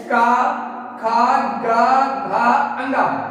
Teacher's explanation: ये सारे के सारे ऐसे व्यंजन हैं जिन ये कंठ के माध्यम से बोले जाते हैं